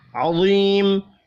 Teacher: یا مدہ ایک الف کے برابر کھینچ کر پڑھا جائے گا، وقف کی صورت میں میم ساکن پڑھیں گے۔